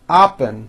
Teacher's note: very often the O sounds like an ah